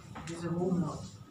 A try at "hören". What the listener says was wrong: Hören. It's not horen. If it's horen, then there's no umlaut.